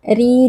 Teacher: di sini kita membacanya dengan tipis karena ro ber harakat kasrah yang merupakan kasrah asli kemudian RI juga terdapat Mad thii karena ada I sukun sebelumnya